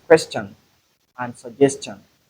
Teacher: When you say shun, it is different from the sound we have there. We don't have the sh sound, rather we have the ch.